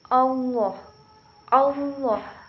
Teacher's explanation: ketika kita melafalkan huruf lam pada lam jalalah, maka huruf lam harus terdengar menebal.